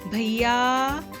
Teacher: या में जो है आ की ध्वनि उसको खींचा गया है, लंबा बोला गया है, इसलिए या के बाद हमने 3 की जो अंक है उसे वहां पर लिखा है। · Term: प्लुत स्वर